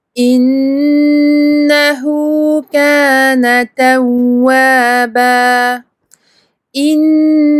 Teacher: Il y a juste un noun mushaddad pour lequel il faut appuyer et faire une runna très longue. Runna, entre parenthèses, nasalisation.